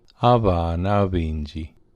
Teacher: Havana Is children, and Havana Avinji is many children, literally children many. If people say it quickly, the end of the first word drops out.